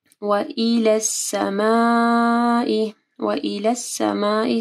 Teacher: سما کے اوپر مد ہے، اس کے بعد حمزہ ہے، تو 4 سے 5 حرکات کے برابر اس کو لمبا پڑھنا ہے